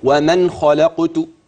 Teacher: خلي بالك النون مافيش فيها غنه